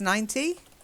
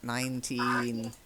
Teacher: when you're doing 19, make sure you get a nice long E. Okay, because otherwise it can sound like 90.